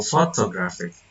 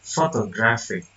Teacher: The suffix ik causes stress to move from the first syllable to the syllable preceding the suffix, clearly illustrating stress shifting.